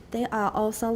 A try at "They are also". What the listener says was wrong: They are. Try not to put a glottal stop. Not they are, but they are.